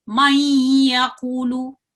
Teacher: آدھا نون پڑھ جائے گا، اس لیے ہم اس کو ادغام ناقص کہتے ہیں. مکمل ادغام نہیں ہوتا، آدھا نون پڑھا جاتا ہے.